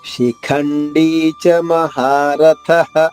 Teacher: శిఖండీ ఖ మహాప్రాణము, ఒత్తు ఖ నొక్కి చెప్పాలి